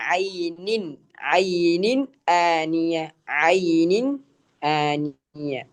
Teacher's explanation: അപ്പൊ ഇവിടെ തൻവീനിനെ എന്ത് ചെയ്യണം, വ്യക്തമാക്കി നൂനിന്റെ ശബ്ദത്തെ വ്യക്തമാക്കണം.